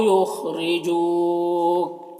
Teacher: او میں واو لین ہے، اسے نرم آواز کے ساتھ جلد پڑھیں گے۔ یخرجو، خا حروف مستعلیہ میں سے ہے، پر پڑھیں گے، را کے نیچے زیر ہے، را کو باریک پڑھیں گے۔ جو میں واو مدہ ہے اور اگر یہاں پر وقف کریں گے تو کاف کا زبر سکون سے بدل جائے گا تو پھر مد عارض وقفی ہوگا۔